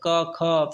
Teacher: जिनका उच्चारण करते समय कंपन ना हो वह आपका क्या है, अघोष है